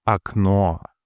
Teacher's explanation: In akno, the final O is stressed and fully pronounced as it is in the alphabet. A no. The first or being the closest pre-stressed vowel is pronounced briefly according to firstderee reduction with a sound similar to that in quickly spoken fun or sun.